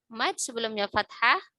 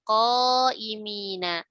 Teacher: Mad sebelumnya fathah pada huruf isti'la ya, maka dia jadi ikut tebal ya